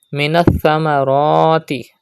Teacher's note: Pronounce ra with thicker voice because it has khada zabar on it.